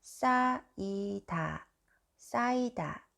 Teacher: Then the sound of the final consonant 히읗 just disappear.